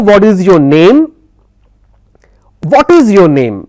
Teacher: my tone is high on what is, and for the name it comes down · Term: falling intonation